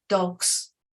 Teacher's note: Then a lot of words that have a s in them, especially plurals, like dogs, the s changes to a z. It's more of a z. It's not a very strong z, but it's a z more than a s.